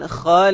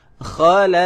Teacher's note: Qalqalah kubra, berhenti ataupun di hujung. Kuat sikit.